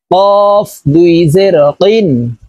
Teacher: কফ দুই জের কিন। কফ হরফ জিহ্বার গোড়া তার বরাবর উপরের তালুর সঙ্গে লাগাইয়া উচ্চারণ করব।